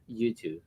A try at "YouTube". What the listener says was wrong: Yeah, it was a V.